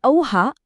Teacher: संयुक्त स्वर हे दोन स्वर एकत्र येऊन बनतात